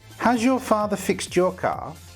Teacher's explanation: We have a d with a y sound. Now you're all experts, you know that this needs to become j, fixed jaw.